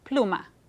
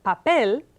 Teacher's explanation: the word pluma it has its stress on the second to the last syllable but the word papel has stress on the last syllable of the word